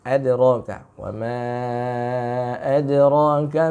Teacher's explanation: Lalu yang kedua, ya, kata adra itu yang sukun huruf dal. Huruf dal punya sifat istifal, ya, maka bacaan qalqalahnya pun jangan tebal